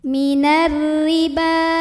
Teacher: Jadi ini ba-nya mad tabi'inya ada pada kata ar-riba, hamzahnya ada pada kata in. Maka ba-nya ini dipanjangkan, boleh 4, boleh 5 harokat. Nah, ini wawunya nggak ngaruh ya, jangan dibaca. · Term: mad jaiz munfasil